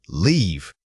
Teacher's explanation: For this word, really stretch out that e sound. Think of it as gliding your mouth into a longer position.